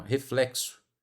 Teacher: R, E, F, L, E, Q, S, e esse O vira U, porque é uma vogal átona, né? Uma vogal fraca ali no final